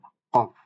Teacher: একবারে জিহ্বার মূল এবং সেই বরাবর উপরের তালু যে নরম অংশ, ওইখান থেকে উচ্চারিত হবে কফ, একটু মোটা করে কফ।